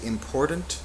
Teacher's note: Some people say important, but it's a very soft T if it's there.